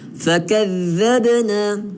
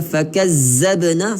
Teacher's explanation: dha kena keluar lidah, bukan zai, di sini dha.